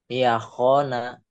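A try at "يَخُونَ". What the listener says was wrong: Yahona masih efek Jawanya. Memang kho-nya kalau orang Jawa jadi ketuker tuh ya. Kho. Baju baju hoho jangan. Baju koko. Ya kona.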